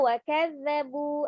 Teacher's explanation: Wa kadzabu ada zal bertasdid double ya. Wa kadzabu bu ada waw sukun sebelumnya dhammah.